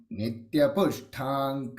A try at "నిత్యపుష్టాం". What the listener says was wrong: ఇక్కడ నిత్య పుష్టాం ష్ట ఒత్తు లేదండి